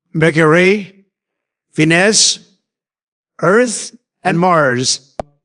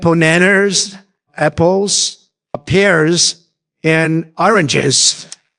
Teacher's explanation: The word slightly rises on the previous item and fall on the last one. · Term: intonation for making lists